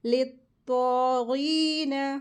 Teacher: तो के ऊपर खड़ी ज़बर लगी, इसको 2 हरकत खींचते हैं, और तो हैवी लेटर है और गैन भी हैवी लेटर है।